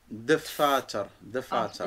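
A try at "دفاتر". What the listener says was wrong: Il faut quand même prononcer un peu le de.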